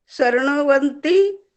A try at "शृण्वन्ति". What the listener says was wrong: शृण्वन्ति, शृण्वन्ति नहीं, शृण्वन्ति आधा न, व पूरा।